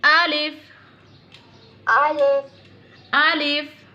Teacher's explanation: pronounce from the empty space of the mouth